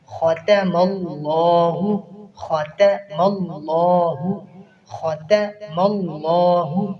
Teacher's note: خا کو پر پڑھنا ہے، تا کو باریک پڑھنا ہے، آگے لفظ اللہ کو پر پڑھنا ہے۔